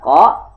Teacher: Qa ini makhrajul hurufnya adalah huruf lisani, pangkal lisan atau pangkal lidah dengan langit-langit dekat dengan pita suara.